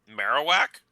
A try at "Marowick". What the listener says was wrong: Marowick. It's an I instead of an A.